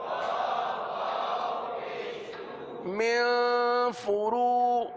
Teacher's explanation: را کو پر پڑھیں گے کیونکہ را پر پیش ہے